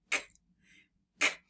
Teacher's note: the back of your tongue touches the roof of your mouth, way at the back, near that soft pallet area, which is very close to where your throat is.